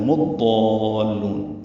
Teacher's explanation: میم کو ضاد سے ملا دیں گے. ادغام شمسی ہوگا، الف لام نہیں پڑھیں گے، ضاد پر پڑھیں گے